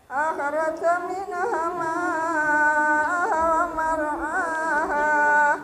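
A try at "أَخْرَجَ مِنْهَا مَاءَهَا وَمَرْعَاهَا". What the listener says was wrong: Akhraja minha panjang, Mbak.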